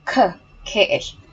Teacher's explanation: and then you pronounce c k c there's a puff there's there's a puff of air coming out of your mouth